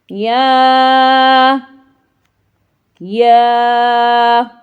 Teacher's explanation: جب زبان کا درمیانی حصہ اوپر والے جو تالو ہے اس کے درمیانی حصے سے ٹکراتا ہے تو وہاں سے یا ادا ہوتا ہے